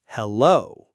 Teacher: Hello. But we actually stress the second syllable more. Hello.